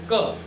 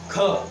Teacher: ख में ज़्यादा हवा निकल रही है। तो आपके इसमें क्या हुआ, क आपका क्या है अल्प प्राण है और ख आपका क्या है महाप्राण है।